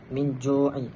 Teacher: Kita baca dengan dengung sekadar dengung dan membaca dengan dua harakat dengung dua harakat. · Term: ikhfa hakiki